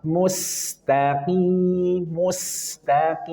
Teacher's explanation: Kemudian ketika mus, setelah mu, sinnya tarik mus dan alirkan suaranya karena dia punya sifat rokhawah. Mustaqim, mustaqim.